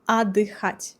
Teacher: we don't really pronounce T here